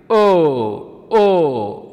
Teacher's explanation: ಕಂಠದಲ್ಲಿ ಹುಟ್ಟಬೇಕು ತುಟಿಯ ಸಹಾಯ ಬೇಕು ಅದನ್ನು ಉಚ್ಚಾರ ಮಾಡೋದಕ್ಕೆ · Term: ಕಂಠೋಷ್ಟಕ್ಷರಗಳು